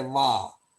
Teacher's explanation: Our teeth touch the lip, but on the lower side of the lip when we say va.